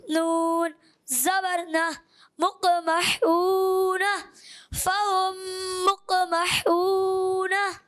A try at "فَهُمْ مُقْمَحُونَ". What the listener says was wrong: فہم مقمحون. یہ ہون یہ زیادہ ہے، ایک الف سے زیادہ نہیں جانا. فہم مقمحون.